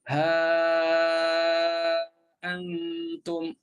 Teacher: Cuma hafs dia panjang sebab dia jadi mad munfasil